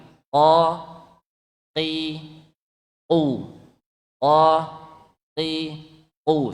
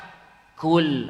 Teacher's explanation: qaf keluarnya pangkal lidah kita mengenai langit-langit kita paling belakang yang lunaknya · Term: huruf qaf